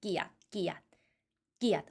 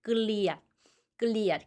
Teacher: 원래 글자는 끌리앗인데 럴링을 잘 안 읽어 주고 끼야라고 한다